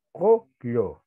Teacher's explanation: Kullu no podemos decir, sino kullu, ¿ya? No con la O del castellano ni con la U del castellano, sino un término medio.